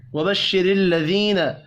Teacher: را کو زیر کی وجہ سے باریک پڑھیں گے